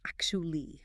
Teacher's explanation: >> People try to say actually, but the T and U blend into a chi sound.